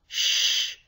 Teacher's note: if you put your hand on your throat when you say shin Shh you don't feel any vibrations